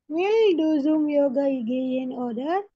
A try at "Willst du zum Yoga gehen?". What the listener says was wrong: wills ya, menggunakan ST. Wills du zum Yoga gehen, Willst du zum Yoga gehen?